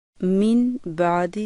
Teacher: جزم والے نون اور تنوین کے بعد جب بھی با آتی ہے تو وہاں نون پڑھنے کی بجائے ہم اسے میم سے بدل کر غنہ کرتے ہوئے پڑھتے ہیں۔ اس کو اقلاب کا قاعدہ کہتے ہیں۔